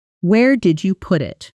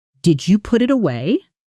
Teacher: Notice the pitch drops on it. · Notice the pitch lifts right at the very end. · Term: falling, rising